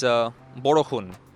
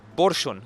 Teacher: So in Bangla, if you want to say rain, there's many words for rain like brishti, but one of it is borshun. So what you'll notice is they've basically put the R and the S together. Whereas in Assamese, they've broken them up.